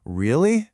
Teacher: if I use any elongated downward pitch, like, Really? Suddenly, I'm being dismissive or sarcastic or annoyed.